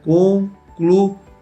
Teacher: No concluía nós vamos ter hiato, vogais separadas.